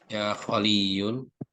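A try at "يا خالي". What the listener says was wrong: Ya, Khali. Jangan yunya tidak dibaca, Pak ya. Khali.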